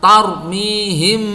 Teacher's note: Mim itu kan dia punya gunah, dia punya dengung. Nah, ketika kita mendengungkan mim itu maka kita tahan dengungannya itu 2 harokat.